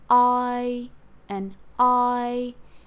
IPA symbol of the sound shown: aɪ